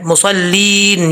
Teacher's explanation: اب اس کو مصلین نہیں پڑھنا، لام کے نیچے زیر ہے، مصلین یا مدہ ہے، ایک الف کی مقدار لمبا کیا جائے گا